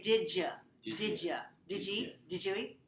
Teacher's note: linking here changes the sound. So it sounds like the letter J, as in the word judge, as the word jail.